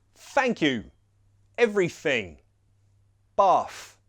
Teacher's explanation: those 'th' sounds, that the unvoiced ones, you can replace for 'f' sounds.